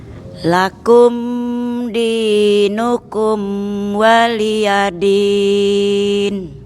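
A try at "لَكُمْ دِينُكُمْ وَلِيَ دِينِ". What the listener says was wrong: Baik, coba Ibu yang mim yang pertama jangan dipanjang ke niat. Lakum dinukum waliyadin. Sekali lagi, pendekin dikit.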